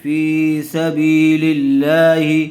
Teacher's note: لفظ اللہ کی لام سے پہلے والے حرف کے نیچے زیر آئی ہوئی ہے، اس لیے لفظ اللہ کی لام کو باریک کر کے پڑھیں گے۔